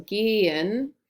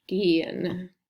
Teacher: Yeah, technically that H is silent. It's what the H is there to make the vowel longer. It makes a long E sound. So gehen. So it has a roll, but you don't technically pronounce the H.